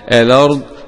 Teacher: وقرأ ورش الأرض بنقل حركة الهمزة وقفا ووصلا